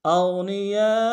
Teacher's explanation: حمزہ کو غین کے ساتھ ملانا ہے، غین کو موٹا ادا کریں گے